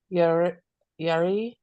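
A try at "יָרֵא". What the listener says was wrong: Yareh. There's a tzere. It's hard to see.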